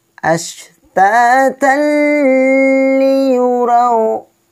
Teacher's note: Maka hukum bacaannya idgham bila gunnah tanpa dengung.